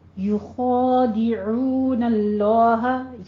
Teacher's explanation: یا کے اوپر ضمہ ہے، ہونٹوں کو گول کیجئے اور خو کو آپ نے پر پڑھنا ہے